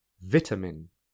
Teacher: a can be reduced to uh in an unstressed syllable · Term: reduced vowel sounds